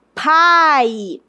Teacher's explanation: perceba que o a sai forte · Pai. Então veja que o A é a vogal e o I é a semivogal.